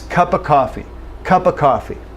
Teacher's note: Cup of coffee, cup of coffee. This F, we lose the sound associated with the F. It becomes cup of coffee, okay?